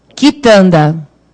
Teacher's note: o U não tem som, né? É o som do K mesmo.